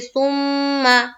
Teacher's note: میم مشدد کا غنہ ہوگا، اس لیے کہ میم کے اوپر کیا ہے؟ تشدید ہے